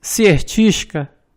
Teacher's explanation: temos a sequência de consoantes RDT. Mais uma vez, não se pronuncia D